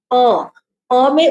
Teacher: both upper and lower lips are touching each other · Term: Bilabial voiceless